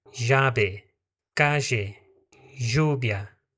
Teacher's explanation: Em alguns países latino-americanos vai acontecer a substituição do LL pelo J, só que de uma maneira mais suave.